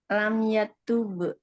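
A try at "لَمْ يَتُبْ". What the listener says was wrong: jangan ada ujungnya om jangan ada be be be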